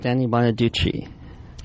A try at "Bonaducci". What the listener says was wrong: You go Danny Bonaducci, and then you go Chi. Like you add in the Chi at the end.